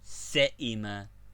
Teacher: Hamza with ya, as in se'ima, to be wearied, se'ima, both vowels pronounced very short.